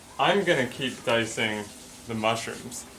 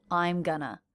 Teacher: So they have contracted I am and also reduced going to gonna. I'm gonna. Notice how I'm is the most stressed syllable in that fragment.